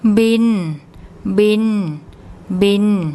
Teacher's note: The tone rules, it's a mid-class initial consonant. It's a live syllable because it ends with an N sound, so it's a mid-tone.